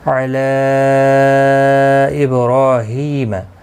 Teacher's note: مد منفصل ہے، 3 الف کی مقدار کے برابر کھینچ کر پڑھیں گے